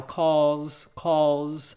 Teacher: I don't think that I would really put a tip of the tongue l in there cause but calls it's almost like a crow's cause and cries